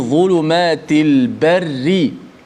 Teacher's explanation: ra bila baris bawah. Hukumnya dibaca dengan nipis.